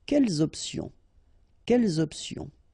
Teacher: the concept of this liaison is that you don't make any pause between the two words.